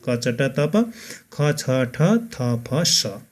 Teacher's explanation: फोक्सोबाट सास बाहिर निस्कँदा स्वर चिम्टीमा कम्पन कम भई आवाज कम आउने स्थितिमा उच्चारण हुने व्यञ्जन वर्णहरू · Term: अघोष